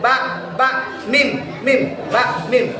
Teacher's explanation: Seperti contoh tadi idgham mutajanisain, ba dengan mim, makhrajnya sama di dua bibir. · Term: Syafatain